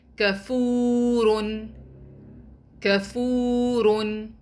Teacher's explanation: In this word, we'll be prolonging letter fa because it's followed by waw mad.